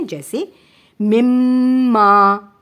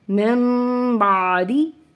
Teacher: ہم اقلاب کرتے وقت غنہ کریں گے تو ہم میم کو ہونٹوں کی نرمی سے ادا کریں گے